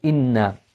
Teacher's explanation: means that we elongate the sound of the known and also we have this sound that emanates from the nose and then as you pronounce the noon with the fat on